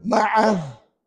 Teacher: Bila berhenti ma'ah bermakna tidak ada mat apa-apa.